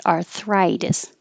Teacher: the vowel is eye so your tongue has to rise